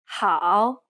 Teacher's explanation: tone is often the most challenging for many students of chinese starting from around mid-range dip to the very bottom of your range until you feel like something is stuck in your throat and then rise quickly to clear it using hand gestures while trying to pronounce this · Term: falling and rising tone